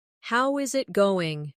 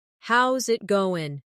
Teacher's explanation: Instead, "How is it going?" becomes "How's it going?" The is disappears, and the final g in going often softens. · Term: connected speech